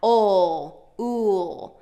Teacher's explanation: And both of these are dark L's, meaning dark L's, the tongue drops at the bottom of the mouth